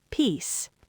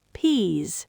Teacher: Peace ends with an unvoiced s sound, short vowel, peace. Peas ends with a voiced z sound, long vowel, peas.